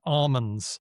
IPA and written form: amənz (ALMONDS)